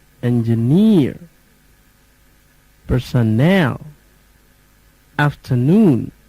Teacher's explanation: three syllabic words third syllable stressed